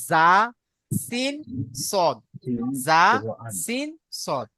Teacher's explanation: জীবের আগা এবং সামনের উপরের ও নিচের দুই দাঁতের আগার সাথে লাগিয়ে উচ্চারিত হয় সিন সদ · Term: মাখাজ নাম্বর 13